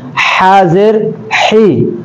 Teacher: حا کا مخرج چونکہ درمیانی حلق کا میں نے بتایا ہے تو درمیانی حلق سے نکالنا ہے